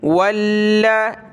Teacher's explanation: لام کے اوپر یہ تشدید ہے، جس حرف پر یہ تشدید آ جائے اس کو سخت کرنا ہوتا ہے، لام کو سخت کریں گے۔ واو لام زبر واللام زبر لا، واللا اس طرح پڑھیں گے۔